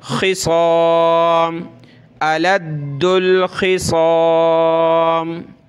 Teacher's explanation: खा और साद को मोटा करना है